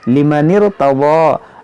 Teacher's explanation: इस नून को रा से मिलाएंगे